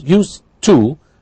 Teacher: have what's called blending or elision, because we have a d and a t. What you hear is used to, but of course we know the construction is used plus to.